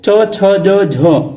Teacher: च में देखो, च छ ज झ, ये आप वर्ण बोलो तो आपकी जो जीभ है वो च बोलते ही जो जीभ है वो तालु के टच कर दी है, जीभ के ऊपर वाले भाग में टच कर दी है